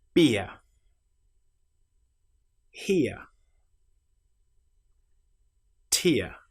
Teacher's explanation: With this vowel sound, we start with the shape I and we end with our very common sound uh ear.